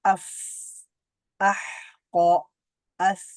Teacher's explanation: আস আওয়াজটা জারি থাকছে, শ্বাসটা জারি থাকছে।